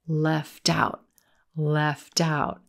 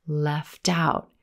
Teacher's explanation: we've got linking of that final T sound in left in into the word out